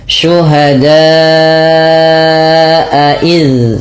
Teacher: Cara membacanya adalah memanjangkan da-nya sepanjang 4 atau 5 harokat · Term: mad wajib muttasil